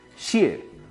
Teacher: cuarto tono, descendente, casi como con tilde